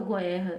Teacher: Eu não ouço em nenhum momento a letrinha U.